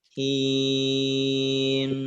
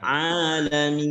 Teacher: Ketika dia sukun dan waqaf, ada gunnahnya.